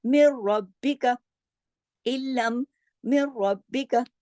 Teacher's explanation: दोनों में नून साकिन है लेकिन कहीं भी गुन्ना नहीं आया। तो ये लफ्ज यरमलून में से ये दो हरूफ ऐसे हैं, रा और लाम, के इस पर बिल्कुल गुन्ना नहीं होता, इसलिए इसको कहते हैं इदगाम ताम बिला गुन्ना।